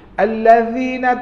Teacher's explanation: Allazina tubik lidah, jangan kacik gigi dah.